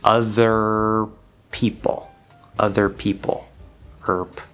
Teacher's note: you just close the lips into the p and before you release the p you need to release the r in your mouth